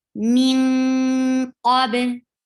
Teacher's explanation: Min ikhfa, and that is a heavy ikhfa because you find heavy letter of ikhfa here. So you are hiding the sound of noon, going towards the makhraj of qaf, and keeping your sound in your nose.